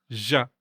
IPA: ʑ ʑ